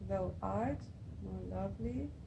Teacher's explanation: first an unstressed syllable is followed by stressed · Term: iambic pentameter